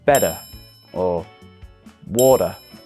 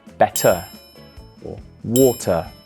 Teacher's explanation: the letter T in the middle of a word in American English is pronounced more as a d